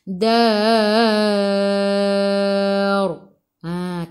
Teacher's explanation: Ra bila berhenti kena ada takrir getaran.